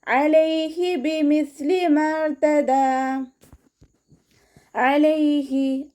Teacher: അനിന്റെ സൗണ്ടിനെ തൊണ്ടയുടെ മധ്യഭാഗത്തുനിന്ന് തന്നെ കൊണ്ടുവരുക ഹംസയുടെ സൗണ്ട് ആയി പോകാതെ നോക്കുക